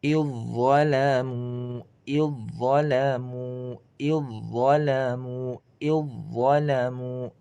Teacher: Za-nya dileburkan ke dho, ya.